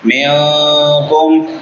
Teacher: منکم نون ساکن پہ اخفا ہوگا، میم ساکن پہ اظہار ہوگا